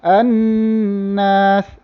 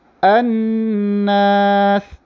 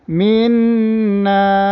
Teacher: 2 harakat dan hidung kamu ada rasa getaran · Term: getaran dekat hidung